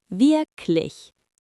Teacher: Germans drop the hard G at the end.